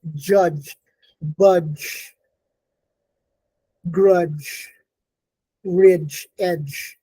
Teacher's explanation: The j starts out as a d, but it is released as a j. And it's voiced. It's palatal.